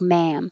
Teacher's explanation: ma'am is the vowel ah so you have to open and keep your lips back